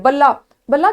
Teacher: با کے بعد زبر، با کے اوپر زبر اور لام کے اوپر تشدید ہے، یعنی لام پیچھے بھی پڑا جا رہا ہے اور اگلے الف کے ساتھ بھی ملایا جا رہا ہے